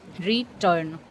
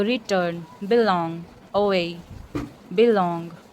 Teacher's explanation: री बोलने में स्ट्रेस नहीं लग रहा है, लेकिन टर्न बोलने में स्ट्रेस्ड लग रहा है, स्ट्रेस्ड सिलेबल लग रहा है. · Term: iamb